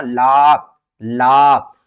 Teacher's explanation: لام کے آگے الف ہے، الف سے پہلے زبر ہے تو یہ حروف مدہ بن گیا ہے، تو اس کو ہم نے ایک الف کے برابر کھینچنا ہے